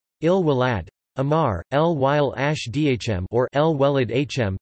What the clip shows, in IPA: el ˈwælæˈdɑħmɑɾ or el ˈwælæd ˈʔɑħmɑɾ